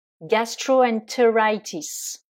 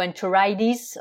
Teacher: si on le prononce avec l'accent américain puisque vous le savez les Américains ont tendance à prononcer les t comme des d